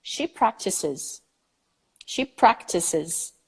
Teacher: There is a third syllable now included with another vowel.